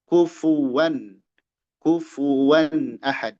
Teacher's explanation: Nah, di sini hati-hati domah fa disempurnakan kufu fu kufuan kufuwan ahad. Wau jangan jadi hamzah, jangan kufuan